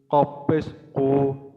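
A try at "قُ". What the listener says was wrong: মোটা হবে। হ্যাঁ, কফের ক্ষেত্রে মোটা হবে।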